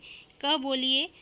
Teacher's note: क बोलिए तो क के साथ अ का उच्चारण हो रहा है।